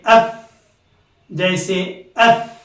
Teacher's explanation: ऊपर के दांत नीचे के होंठ के तर हिस्से को लगाने से फा निकलता है। ये ऊपर के दांत हैं, ये नीचे के एक हिस्सा खुश्क हिस्सा होता है, जो बाहर का हिस्सा होता है वो खुश्क हिस्सा होता है, अंदर का जो हिस्सा होता है वो तर हिस्सा यानी भीगा हुआ हिस्सा होता है। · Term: फा का मखरज